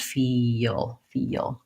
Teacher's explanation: do you hear how there's a little bit of a Y sound in there yeah because I'm gliding from vowel to vowel